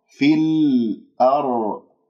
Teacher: لاحظوا كيف انتقلت إلى اللام من كلمة الأرض، لأن بعدها همزة حروف قمرية